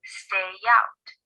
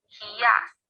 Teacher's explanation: If a word ends in the sounds e, I, a, I, or oi, and the next word begins with the vowel, the 2 words are linked with a y sound. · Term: Linking words with y